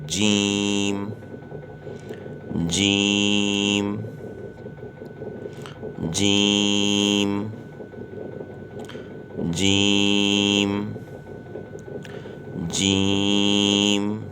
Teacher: زبان کا بیچ جب تالو کے بیچ سے لگے، زبان کے بیچ کا حصہ جب تالو کے بیچ کے حصے سے لگے گا تو یہ حرف پڑھا جائے گا